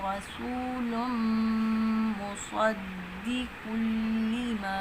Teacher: صاد میں سیٹی ہے، صاد حروف صفیریہ میں سے ہے تو اس کو سیٹی کی آواز بھی ہماری آئے اور موٹا بھی پڑھا جائے ۔ شاد والا جو لفظ ہوتا ہے اس کو ہمیشہ زور